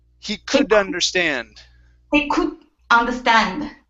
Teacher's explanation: when you have vowel sounds after the D, okay, what you want to do is mix that word. So take the D and slide it over to the beginning of the next word.